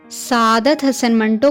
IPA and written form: səˈaːd̪ət̪ ˈɦəsən ˈməɳʈoː (سعادت حسن منٹو)